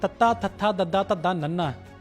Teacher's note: ਇਸ ਨੂੰ ਬੋਲਣ ਲੱਗਿਆਂ ਜੀਭ ਸਾਡੇ ਦੰਦਾਂ ਨਾਲ ਆ ਕੇ ਲੱਗਦੀਹ ਇਸ ਕਰਕੇ ਇਸ ਨੂੰ ਦੰਤੀ ਧੁਨੀਆਂ ਕਿਹਾ ਜਾਂਦਾ ਆ।